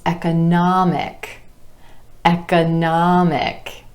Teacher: Our stress shifts to that ah vowel sound right before the IC ending,